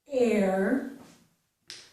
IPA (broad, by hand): ɛɹ